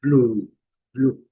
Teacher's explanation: a letra e não pronunciada e u com som de u longo